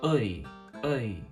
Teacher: Combine that with the fact that the I diphthong begins in a much lower, more neutral position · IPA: ̀ə͡i